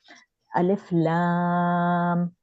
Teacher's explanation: الف لام یہ 6 کاؤنٹ ہے. لا آ کی ساؤنڈ 6 کاؤنٹ کھینچے گی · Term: لازم مد